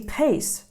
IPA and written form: pās (pace)